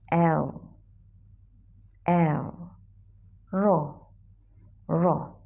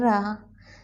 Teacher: sebab dalam bahasa Arab, ro perlu ditebalkan bahagian atas